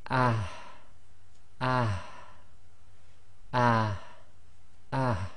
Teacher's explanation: Now the next one is the what I call the soft ha. It's the ha that comes right from the bottom of the throat. Now this one's very difficult because what you've got to do with, especially with the sakin version of this, is bring the sound out but not bring the air right out.